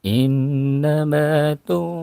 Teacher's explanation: ada Nun yang bertasjid ditahan dipanjangkan